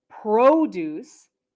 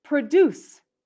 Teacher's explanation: and produce they are very similar but you can hear that with the noun the stress is first and with the verb it's second